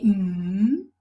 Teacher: passage to the nose but for example when we say hmm the soft palate is lowered so the sound resonates in the nose because the entrance is not blocked the soft palate has been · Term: nasal